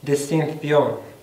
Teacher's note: Y este sonido de ción es la fricativa dental sorda